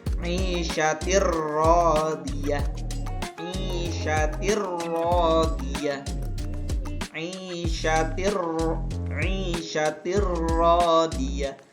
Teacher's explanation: Tanwin pada huruf ta bertemu dengan huruf ro, maka dibaca langsung ke huruf ro dengan tanpa dengung. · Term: idgham bila gunnah